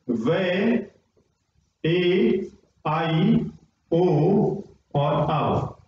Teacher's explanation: वे का उच्चारण दांत से और ओष्ठ से, ए आई का उच्चारण कंठ और तालु से, ओ औ का उच्चारण कंठ और ओष्ठ से